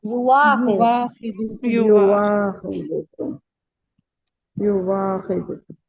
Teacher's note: سو ورش اور ابو جعفر ابدال کریں گے۔ ہاں ابدال بالواو کریں گے، ٹھیک ہے؟ سو ورش اور ابو جعفر کیا کریں گے؟